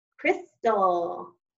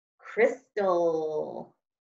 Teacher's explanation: That ul sound did not have a vowel. It's making a schwa sound.